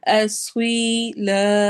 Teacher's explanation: اسویلا سوئی سواد موٹا ہے، سی نہیں پڑھنا اس کو، سوئی پڑھنا ہے